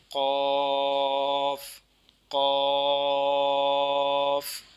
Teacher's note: زبان کی جڑ اور تالو کا نرم حصہ